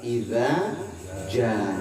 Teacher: Kalau idza yang pertama yang ditipisin itu dua harkat, sedangkan ja ditebalin lima harkat. Ya, ini mah mad wajib nih.